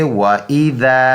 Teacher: یہ ذال نرم سا ہے، زبان کو تھوڑا سا باہر نکالیں گے، سامنے کے دانتوں کے سروں کے ساتھ لگائیں گے، یہ نرم سا ذال ادا ہو جائے گا۔ تو یہ پڑھیں گے وَإِذَا۔